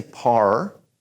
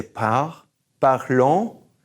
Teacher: So push that R all the way back and say parlons.